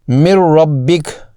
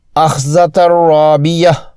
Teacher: آخر میں حرف را کی مثالیں جو کہ ادغام بغیر غنہ کا دوسرا حرف ہے، اس میں بھی نون کی آواز حذف کرنا ہوتی ہے